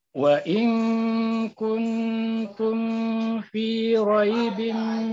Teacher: Mim mati berjumpa dengan fa, jangan dipanjangkan. Langsung jelas itu. Kuntum fi raibim, kuntum fi, jangan kuntum fi.